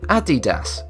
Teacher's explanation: Even so, despite this being one of the largest sportsear manufacturers, most people pronounce the name Adidas, which is incorrect. Guys stress the second syllable instead of the first. Adidas is the correct pronunciation.